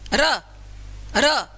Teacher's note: जीभ में कंपन होता है बोलते समय